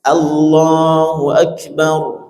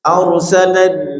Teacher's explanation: rnya tebal didahului fathah ya ra sukun didahului fathah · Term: tafkhid